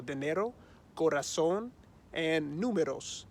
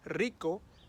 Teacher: your tongue is just touching the roof of your mouth one time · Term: soft R